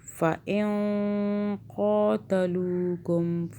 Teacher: نون پہ یہاں پھر اخفا کا قاعدہ ہے، قاف اخفا کا حرف ہے، 2 سیکنڈ کے لیے اخفا کریں گے، نون کو چھپائیں گے، 2 سیکنڈ کے لیے زبان تالو سے ٹچ نہیں ہونے دیں گے